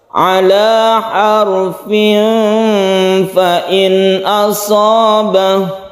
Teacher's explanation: Jaiz artinya boleh, boleh berhenti, boleh terus. Apabila kita meneruskan ayat ini maka berlaku hukum tanwin bertemu dengan fa. Kita sebut dengan ikhfa hakiki dan membacanya itu samar.